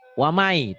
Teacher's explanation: Waman N-nya nggak dibaca, jadi wamai. Wamai yabtagi. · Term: idgham